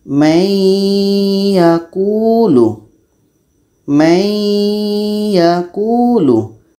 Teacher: nun mati ini ke ya itu dinamakan dengan Idgham naqis karena dengungnya pada Nun ini terbawa oleh ya May yaquulu May yaakulu proses dengungnya yang ada pada Nun terbawa · proses dengungnya yang ada pada Nun terbawa kepada ya Ini namanya idgam naqis masuk secara kurang sempurna karena terbawa dengung